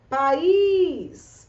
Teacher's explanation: país é uma palavra que apresenta um hiato tônico, por isso é acentuada.